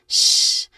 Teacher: Here, of course, this is the unvoiced SH sound